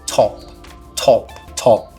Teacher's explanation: eu tô falando top quase que soprando aqui entre a letra t e a letra O então é esse som que a gente chama de consoante Explosiva